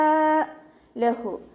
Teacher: ഹ തൊണ്ടയുടെ ഏറ്റവും അവസാന ഭാഗത്തു നിന്നാണ് വരുന്നത്, അക്സൽ ഹൽക്കിൽ നിന്ന്.